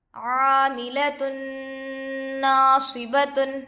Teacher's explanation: تا پر دو پیش ہے، تنوین ہوگا، تنوین کے بعد حروف یرملون میں سے نون دوسرے کلمے میں آ کر ہے، اس لیے گنہ کے ساتھ ملا کر پڑھیں گے۔ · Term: ادغام مع الغنہ